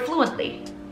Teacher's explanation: Like the word fluently. I stress in the syllable flu